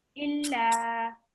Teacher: we have the lam, which carries the fatha, and it's joined directly with the alif. So it's going to be 2 seconds